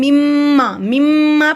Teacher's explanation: مما پڑھیں گے کیونکہ میم پہ شد ہے، میم کو میم سے ملائے